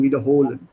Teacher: Make sure your Betonung liegt auf der zweiten Silbe. Yes. Not wiederholen, sondern wiederholen.